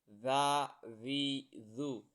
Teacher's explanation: ان کی زبان کی جو نوک ہے وہ آگے والے دو دانتوں کے نوک سے ٹکرانی ہے، تو یہ زال نرم ادا ہوگی۔